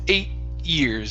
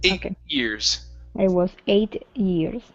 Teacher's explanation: So we're going to use a stop T with years here.